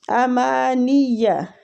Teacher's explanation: یہ مد بھی 3 الف کھینچ کے پڑھی جائے گی، امانیہ نون کو یا کے ساتھ شدت سے ملائیں گے کیونکہ یا کے اوپر تشدید ہے